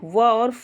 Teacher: दंतोष्ठ में व और फ आते हैं, जहाँ पे दंत और ओष्ठ दोनों मिलते हैं।